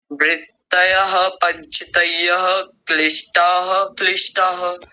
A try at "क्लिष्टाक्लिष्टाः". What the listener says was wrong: क्लिष्टाः, आप यहाँ भी विसर्ग लगा रहे हैं जबकि यहाँ बीच में है ही नहीं। क्लिष्टा क्लिष्टाः। हाँ, अक्लिष्टाः भी कह सकते हैं, पर अभी दोनों जुड़े हुए हैं तो अभी ऐसे ही बोलिए जैसा लिखा हुआ है, क्लिष्टा क्लिष्टाः।